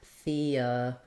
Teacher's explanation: This is a great example of a couple of different things that the E is going to do, just like we were talking about. So in theoretical, our stress is on the ret syllable.